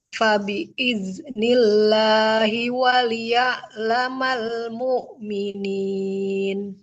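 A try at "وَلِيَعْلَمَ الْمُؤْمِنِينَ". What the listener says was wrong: Waliya'laman. Huruf ainnya jangan seperti hamzah. Waliya'lamal mu'minin. Buru-buru di sini ya. Tidak waliya'lamal mu'minin. Lamnya kan harus mengalir dulu suaranya. Waliya'lamal mu'minin.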